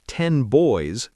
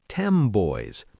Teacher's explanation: ten boys can sound like tem boys because the N changes to match the B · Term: assimilation